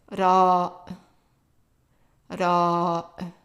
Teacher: It's kind of in between the English R and the Spanish R. It's a rolled R, but it's not as strong as the Spanish R.